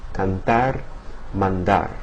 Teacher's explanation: In canar and mandar the t and the d that come after the n draw the tongue down against the teeth